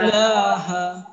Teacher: ইলাহার লা এক আলিফ টান এক আলিফ টানতে হবে